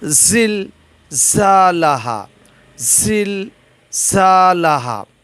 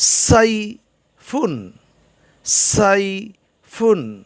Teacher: আওয়াজের চাইতে হাওয়ার জোর বেশি হবে জিহ্বার আগাকে দাঁতের আগা দিয়ে চিপে ধরে এগুলো উচ্চারণ করতে হয় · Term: হরফে সফির